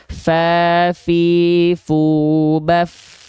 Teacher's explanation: pastikan ketika Fa dilafalkan tepat pada makhrajnya dia akan mengalirkan sifat hams atau mengalirkan nafas